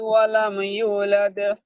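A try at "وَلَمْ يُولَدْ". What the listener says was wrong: ইউলাদ, এই ইউটা একটু টান দেবেন। ওয়ালাম ইউলাদ, ইয়া মাদ্দা তো এটা।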